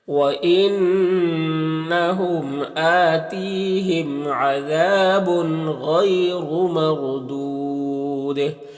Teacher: اور دودھ یہاں پر وقف کریں گے تو مد عارض وقفی ہوگا اور دال میں قلقلہ ہوگا